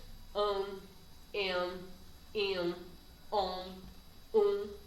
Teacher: Porque eu não pronuncio nesse encontro, dependendo da palavra, eu não vou pronunciar o M nem o N. Eu só vou pronunciar a vogal de forma nasal. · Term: dígrafos vocálicos